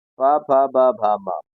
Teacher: इन वर्णों का उच्चारण ओष्ठ स्थान से, होठों से होता है।